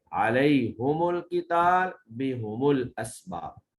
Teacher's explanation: گویا کہ ہا اور میم دونوں کو مضموم پڑھیں گے